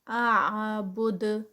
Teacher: یہ بھی 4 کاؤنٹس پہ۔ اعبد، با اور پھر آگے دال جو ہے وہ اس کو دال کا قلقلہ سٹاپ پہ آ جائے گا